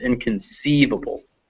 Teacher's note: the stress is on this part sieve